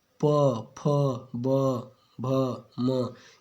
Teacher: जिन व्यंजनों के उच्चारण में दोनों ओष्ठ द्वारा श्वास का अवरोध होता है ओष्ठ व्यंजन कहलाते हैं · तो जब आप प, फ, ब, भ, म ये सब जब बोलेंगे ना तो ये दोनों ओंठ मिलके क्या करते हैं? हवा को रोक देते हैं, अवरोध उत्पन्न कर देते हैं उसमें, है ना। श्वास को क्या करते हैं, अवरोध। · भाई आप प बोलेंगे ना तो किसी भी कीमत में आप, जब तक आपके दोनों लिप्स, ऊपर और नीचे के दोनों लिप्स टच नहीं होंगे ना, तब तक आप प बोल ही नहीं सकते, है ना। तो इसीलिए इसको क्या कहा गया है, ओष्ठ व्यंजन कहा गया है ना, ओष्ठ व्यंजन कहा गया है ना।